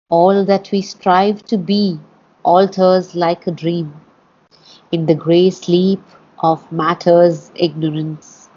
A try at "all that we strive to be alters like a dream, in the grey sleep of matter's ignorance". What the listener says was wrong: I would connect those two lines a little better.